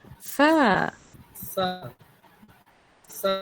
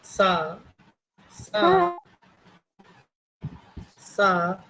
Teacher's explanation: জানেন আপনার জিহবা আপনার উপরের পার্টির যে দাঁত রয়েছে সামনের দুইটা সামনের দুই দাঁতের সাথে একটু জিহ্বার আগাটাকে লাগিয়ে করুন দেখবেন যে হালকা নরম হয়ে উচ্চারণ হচ্ছে [মিউজিক] সাটুখানি টেনে করুন সা করে ছেড়ে দিলে ভালো হবে না